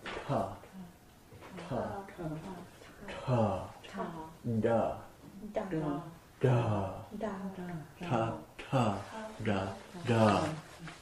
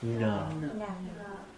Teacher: It's hard, hard aspirate. Soft, soft aspirate, and then nasal. All coming from that same, the cerebral area. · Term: cerebral Varga